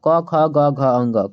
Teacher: तो घ का उच्चारण स्थान हमारा हो जाएगा कंठ हो जाएगा बच्चों को घ ही नहीं बल्कि यहां पर क से लेकर अंग तक क ख ग घ अंग क ख ग घ अङ जो है यहां पर कंठ से उसका उच्चारण स्थान होता है।